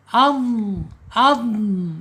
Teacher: Idbaq itu tertutup ya. aliran udaranya tertutup karena dia lidahnya terangkat. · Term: itbaq